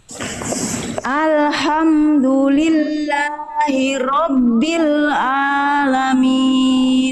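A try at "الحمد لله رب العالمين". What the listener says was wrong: sekali lagi ainnya kurang kuat sedikit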